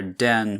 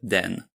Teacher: English has an alveolar series which in Polish is denti-alveolar, so a little further forward in the mouth